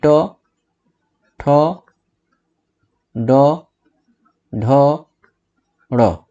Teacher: मूर्धन्य व्यंजन जिसको बोलते समय मूर्धा के स्पर्श से ये ध्वनियां निकलती हैं।